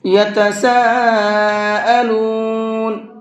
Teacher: یہاں یتسا کے اوپر یہ بڑا مد ہے، اس بڑے مد کو 4 سے 5 الف کے برابر کھینچنا ہے